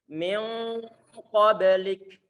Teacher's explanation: suara angin yang keluar setelah kita mengucapkan huruf kaf yang disukunkan. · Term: hamas